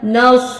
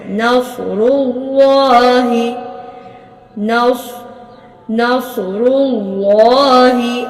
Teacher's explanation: صاد موٹا اچھے سے، نس نہیں کہنا